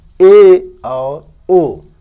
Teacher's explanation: अर्ध समृत वे स्वर जिनके उच्चारण मुख आधे से कम खुलता है, आधे से थोड़ा सा कम खुलता है, जैसे ए और ओ।